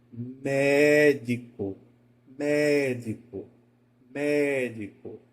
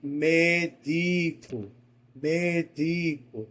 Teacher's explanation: Eu começo com ela alta e desço, médico. A escada vai descendo. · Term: proparoxítonas